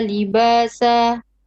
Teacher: When you're breathing out after sa, you're going to make a small hams, and that is not correct. Now try not to breathe out straight after the letter ends.